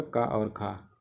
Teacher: यानी का वर्ग में जो ध्वनियाँ हैं वो कंठ ध्वनियाँ हैं